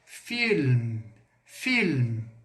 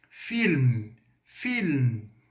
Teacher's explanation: Eu coloco o L bem forte e eu tenho um M. O M no francês ele é bem nasalado.